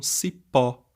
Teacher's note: esse pó né a sílaba tônica é o pó e nós marcamos então o acento agudo para destacar essa esse